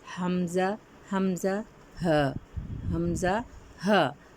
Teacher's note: حلق کے آخری حصے سے حمزہ اور ہا حرف ادا ہوتے ہیں۔